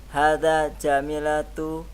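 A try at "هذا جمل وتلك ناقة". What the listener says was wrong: Kalau jamilatun ada ya-nya setelahnya. Setelah mim.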